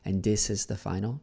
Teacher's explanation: So the TH, it's sounding like a D instead of a th, right?